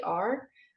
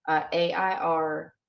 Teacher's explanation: the r is slightly breathy when there is an i in front of it